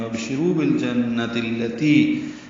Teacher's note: بالجنہ لام ساکن پڑھا جا رہا ہے، اظہار قمری ہے، نون مشدد پہ غنہ ہے. بالجنہ کا تائے مربوطہ ہے، آخر میں اس کو التی کے لام سے ملا دیں گے، بالجنۃ التی ہو جائے گا.